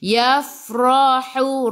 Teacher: ra baca dengan tebal, ra baris atas tafkhim.